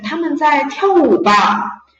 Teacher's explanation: And with the rising intonation, 他 们 在 跳 舞 吧. They are dancing, right?